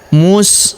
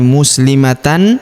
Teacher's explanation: maka tanwin annya melebur menghilang ke huruf la yang berharakat tasydid kita tahan dan kita tekan ya muslimatal.